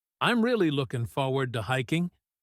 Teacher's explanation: In fast English, the G at the end of looking is dropped.